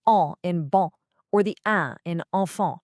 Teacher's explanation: they're different because the air is passing through your nose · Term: nasal vowels